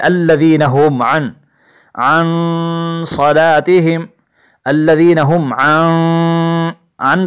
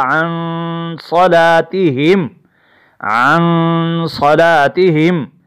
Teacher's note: آگے پڑھیں گے الذین هم عن صلاتهم الذین هم عن پر غنہ ہوگا. نون کی ادائیگی میں غنہ ہوگا. غنہ کہتے ہیں ناک میں آواز لے جانے کو